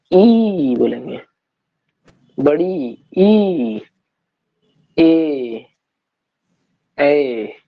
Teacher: अग्र स्वर जिनके उच्चारण में जीभ का अग्रभाग उपयोग होता है